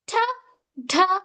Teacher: T, t, these are called alveolar sounds as your tongue touches behind the teeth.